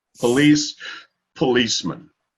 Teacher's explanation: But as far as the accent goes, it's on the second syllable. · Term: syllable emphasis